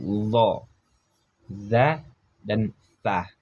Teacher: ujung lidah dengan ujung gigi seri atas dan bawah huruf masih sama dengan huruf tadi yaitu dza dan tsa masih dibaca dengan ujung lidah.